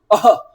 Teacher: ह गले पे जोर पड़ रहा है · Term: विसर्ग